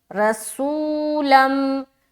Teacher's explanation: اس کے بعد لام کے اوپر دو زبر کی تنوین آ گئی اور آگے آنے والا حرف میم ہے اور میم کے اوپر شد ہے، تو دو زبر کی تنوین کے بعد اگر میم آ جائے تو وہاں پر ہم کیا کرتے ہیں؟ ادغام ناقص کا قاعدہ، ادغام کریں گے غنے کے ساتھ